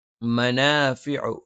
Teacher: മ രണ്ടു ചുണ്ടും തുല്യമായി അടച്ചുവെക്കണം